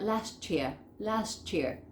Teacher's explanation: Fíjense cómo se une todo, last, y queda ese ch